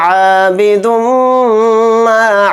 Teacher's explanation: عابد ما، عین کے ساتھ الف ہے تو عین الف زبر آ کو تھوڑا کھینچ کر پڑھیں گے اور دال کو میم میں ملا دیں گے، اور میم کے اوپر تشدید ہے تو میم میں غنہ کریں گے، اور میم کے ساتھ الف مدہ ہے تو میم الف زبر ما کو تھوڑا کھینچیں گے۔